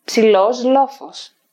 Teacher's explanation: between word boundaries there might be an optional assimilation of lambda